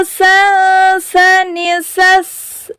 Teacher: Saat dia disukun, dia ada hamesnya, ada keluar anginnya. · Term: huruf sa